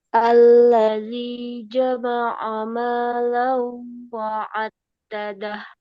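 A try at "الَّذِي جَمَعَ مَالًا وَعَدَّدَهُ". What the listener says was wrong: Nah, ini launya agak lama ya. Malau wa'addada.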